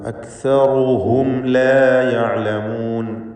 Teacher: സാക്കിനത്തായ മീമിനെ ഇൽഹാർ ഷഫവി നൽകി മണിക്കാതെ വെളിവാക്കുക.